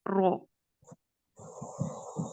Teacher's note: इसका जो मखरज है वो तो यानी आपको पता है कि खुरदरा ہم نے کل اس کو ڈسکس کیا تھا کہ کھردرا جو آپ تالو ہے اوپر والا حصہ، اس زبان کا اگلا حصہ جب اس کے ساتھ ٹچ ہوتا ہے تو پھر یہ رو ادا ہوتا ہے، رو۔ اگلے حصے سے جو رأس اللسان سے جو ٹچ کرنے سے ادا ہوتا ہے ایک مرقق رو، یعنی باریک رو